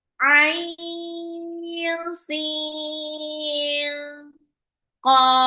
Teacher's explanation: Nun sukun kalau ketemu sama qof itu ikfa lagi.